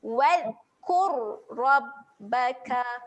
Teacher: Ro dekat sini, ro yang tebal. Okay, kita tebalkan bunyi dia. Bunyi dia kena muncung lah, huruf ro tebal kena muncung.